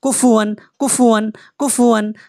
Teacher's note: তানভীনের পরে হামজা আসছে এটা হবে ইজহার বিনা গুনাহ পড়তে হবে